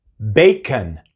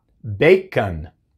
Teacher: Tenemos el sonido largo de la A, y el sonido corto de la O, A, es el schwa.